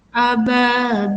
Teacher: Ababil, yang terakhir ini mat tabi'i diwakafkan di akhir kalimat, maka disebut dengan mat arid li sukun. Panjang bacaannya adalah 6 harokat. Tidak boleh kurang.